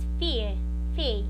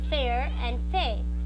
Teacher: So in RP, there is no such sequence of vowels plus R exist, resulting instead in diphthong.